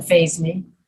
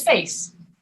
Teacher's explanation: one is pronounced phase and one is pronounced face without the voice